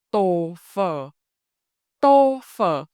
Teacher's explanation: When you say tô phở, your lips close tighter for tô and open more for phở.